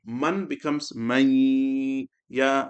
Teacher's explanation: You can say noon sakin will join with ya and do ghunna, or you can say put tashdid on the ya and do ghunna.